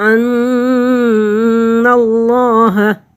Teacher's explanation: اللہ کے لفظ سے پہلا لفظ نون ہے، اس کے اوپر زبر ہے، تو اللہ کو پر پڑھیں گے۔